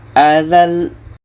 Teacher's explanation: ketika berhenti ada lam yang ada tasydid, maka tasydid ini tetap dibaca. Kaedah tasydid adalah ditekan. Contoh, minhal azal, azal, kita tekan lamnya, azal.